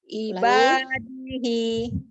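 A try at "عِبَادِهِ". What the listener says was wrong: Dihi 2 harokat. Ibadihi. Jangan dikurangi. Umi ngurangi. Pengen cepat berhenti aja. Jadi jangan cepat pengen berhenti karena dia huruf tentang gitu ya.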